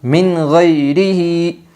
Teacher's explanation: نون ساکن کی آواز کو خوب ظاہر کر کے پڑھے گی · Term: اظہار حلقی